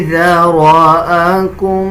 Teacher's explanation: اکثر لوگ ذال اور زا کو مکس کر دیتے ہیں، اس طرح پڑھنا غلط ہے، بلکہ ذال کو نرم پڑھا جاتا ہے. جب زبان کی نوک اب دونوں دانتوں کے درمیان لے کے آئیں گے تب ذال ادا کیا جائے گا